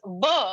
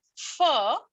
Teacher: Now, what is interesting is that it becomes very important to notice this with fur and v, because generally we would think that fur is the one which will expel more air, but that's not the case. Fur versus v, you will find that v expels more air than fur.